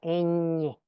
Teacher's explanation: la parte del aire pasa por la cavidad nasal. Luego la lengua toca la raíz de los dientes en la parte superior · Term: nasal alveolar